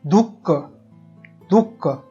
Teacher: विसर्गाचा उच्चार, त्याच्या मागील जो स्वर असतो त्या स्वरामागोमाग हकार युक्त होत असतो.